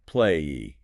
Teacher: if you say the word play, ending on that vowel sound, your vocal cords are vibrating heavily.